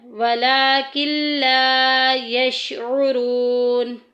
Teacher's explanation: واو ساکن پیچھے پیش آ گئی ہے، واو مدہ کا قاعدہ جاری ہو رہا ہے، 1 الف کے برابر لمبا کریں گے